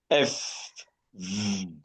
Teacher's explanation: Your upper teeth come against your lower lip.